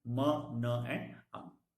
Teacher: Stricture is complete oral closure, and the sound produced is called as nasal sound.